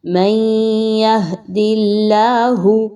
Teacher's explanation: نون ساکن کے بعد یا کا حرف آ رہا ہے، یا کا حرف آ گیا تو ادغام مع الغنہ